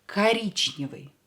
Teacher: Ударение на букву И. И is stressed.